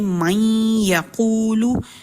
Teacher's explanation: اب جیسے پہلی مثال ہے من یقولو، تو اس میں ہم نے پڑھا من یقولو، اب نون کے اوپر ساکن ہے اور یا جو ہے وہ مشدد ہے یعنی متحرک ہے، تو ہم اس میں جب پڑھتے ہیں من یقولو تو نون کی ایک صفت ہے غنہ جو اس میں رہ رہی ہے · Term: ادغام ناقص